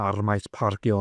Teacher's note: It's the rolled at the tip of the tongue sort of R that you hear in Welsh.